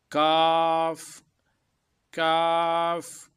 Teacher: زبان کی جڑ اور تالو کا سخت حصہ